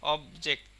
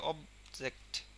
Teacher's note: অবের ওপরে প্রচুর স্ট্রেস পড়তেছে, বাট জেক্টের ওপরে কিন্তু অতটা না, আমরা ছেড়ে দিচ্ছি খুব দ্রুতই অবজেক্ট।